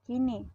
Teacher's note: direalisasikan sebagai bunyi I tinggi atas depan tak bundar apabila berada pada silabel terbuka atau silabel tak berkoda